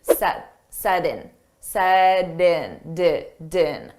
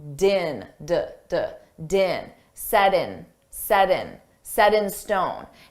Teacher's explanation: Notice we have a T between 2 vowels. So we can pronounce that T as a soft D, set din. So I take that sound and I connect it to the next word in, and it sounds like din, din, set in, set in stone.